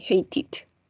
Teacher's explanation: cuando la E está entre la T y la D, va a sonar como una I